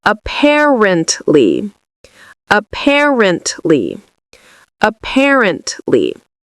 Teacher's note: the second syllable is what we say with emphasis. So it's the part we say louder and longer.